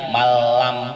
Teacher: idham bilahuna ini yang tidak ada dengungnya